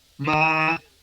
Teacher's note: el primer tono es alto y sostenido